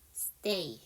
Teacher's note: S 사운드 뒤에 무성음 T죠. 그래서 쌍자음 stay 해 주시면 되고요.